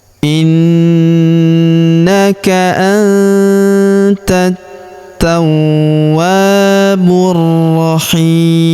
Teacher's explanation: huruf hi kita panjangkan 2, 4 atau 6 harokat karena di depan huruf hi terdapat ya sukun sebelum huruf pemberhentian, dan huruf pemberhentian huruf mu kita sukunkan atau kita matikan.